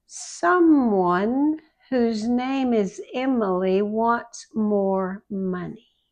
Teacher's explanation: M the lips must touch and stay there for a little bit.